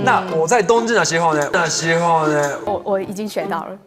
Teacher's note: pronouncing 知、吃、诗 similar to 鸡、七、西 in Mandarin